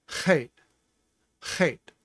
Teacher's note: With a chet, you're scrubbing your tongue at the back of your throat and making a popping sound that says chet, chet.